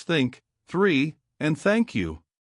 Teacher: The first is the voiceless th where only air comes out. No vibration in your throat like in the words think three and thank you.